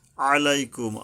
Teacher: আইন গলা চেপে আদায় করতে হবে